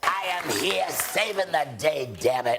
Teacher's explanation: Harvey's unique voice is actually the result of overdeveloped false cords and not as many have assumed from smoking cigarettes